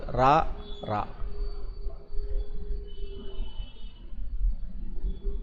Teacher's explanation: நாவின் நுனி மேலண்ணத்தில் முதல் பகுதி பல்லுல கூட படக்கூடாது பல்லுக்கு பின்னாடி கிடையாது . மேலண்ணத்தினுடைய முதல் பகுதி நா ரா அப்படின்னு இங்க இந்த ரா நடுப்பகுதி